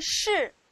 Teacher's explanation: 它是一个翘舌音，声母是诗，同时它也是一个整体认读音节